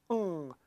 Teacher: we are using the back of our tongue just like the G sound, except the air is going out of our nose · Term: The ng sound